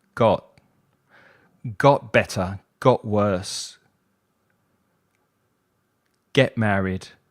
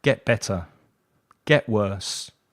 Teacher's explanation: So it's not a very strong T sound. I lose that T sound. I'm not pushing air out of my teeth.